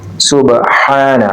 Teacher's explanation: ہا کو وسط حلق سے ادا کیا جائے گا